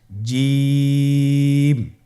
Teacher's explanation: এর মাখরাজ হলো জিহ্বার মধ্যখান, তার বরাবর উপরের তালুর সঙ্গে লাগিয়ে উচ্চারিত হয়।